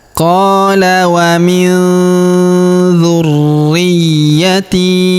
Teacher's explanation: Qala wa min dzurriyyati, dzurri, huruf ri kita tahan dan kita tekan karena terdapat tanda tasydid di atasnya. Qala wa min dzurriyyati, huruf ya ini ya, di sini terdapat tanda tasydid, maka kita tahan dan kita tekan ya.